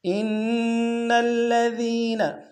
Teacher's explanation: نون کو الذین کے لام کے سامنے آنا ہے، غنہ نہیں ہوگا